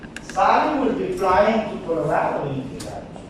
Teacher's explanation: Flying is more important for me, so I say it louder. The action.